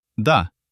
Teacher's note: No aspiration. Perfect dental sounds.